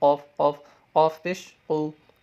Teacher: قاف، یہ بھی حلق سے ہوگا لیکن اس کو موٹا پڑھیں گے